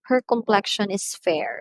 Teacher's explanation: we give emphasis in uttering the word fair in the sentence her complexion is fair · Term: stress words